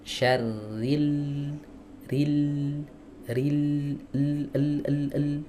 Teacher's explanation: Jadi bagian lidah yang menempel ya pada ee muqaddamul hanak makhrajnya itu kan ada di tepi lidah bertemu dengan muqaddamul hanak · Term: huruf lam